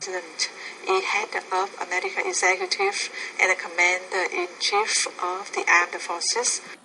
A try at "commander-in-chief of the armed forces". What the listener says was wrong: So he's the commander, I would put stress on the second, commander-in-chief of the armed. You're not pronouncing the R, armed forces.